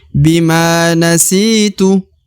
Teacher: La tu'akhidni bima, ya, kemudian ma dibaca 2 harokat karena ada alif di depan huruf ma. Bima nasitu, huruf si dibaca 2 harokat karena di depannya terdapat ya sukun atau ya mati.